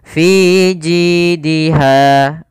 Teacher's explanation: Kemudian ji ada kasrah bertemu dengan huruf ya, panjangnya 2 harakat. Kemudian pada lafal ha ada mad tabi'i, yaitu panjangnya 2 harakat, fathah bertemu alif, maka suara fi ji dan ha harus sama. · pada lafal fi ada mad tabi'i, yaitu kasrah bertemu dengan huruf ya, panjangnya 2 harakat. Kemudian ji ada kasrah bertemu dengan huruf ya, panjangnya 2 harakat.